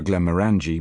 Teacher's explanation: I ask for Glenmorangie malt whisky, stressing the third syllable of the name